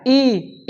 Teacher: ई ई का उच्चारण कहाँ होगा? तालु से होगा।